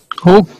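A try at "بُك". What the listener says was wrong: बा से बोलें बुक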